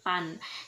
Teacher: kalau diucapkan oleh masyarakat pedalaman, maka pengucapannya atau pelafalannya menjadi pan. Jadi huruf G-nya tidak terdengar.